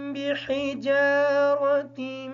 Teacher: بحجارۃ کی جو حا ہے اس کو کلیئر کریں گے۔ جیم کو تھوڑا سا لمبا کریں گے کیونکہ جیم کے بعد الف ساکن ہے